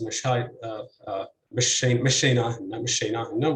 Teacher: with stress on the third syllable, but not with stress on the second syllable. That was not deemed a Faifi pronunciation by the speakers.